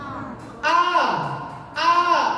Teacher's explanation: makhrajnya ain ada di tenggorokan tengah, sehingga jangan masuk ke hidung.